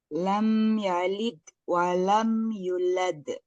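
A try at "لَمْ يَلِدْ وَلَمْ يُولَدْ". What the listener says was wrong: Lam yalid walam yu-nya yang panjang. pantulannya huruf dal ketika lam yalid masih kurang. Lam yalid walam yulad.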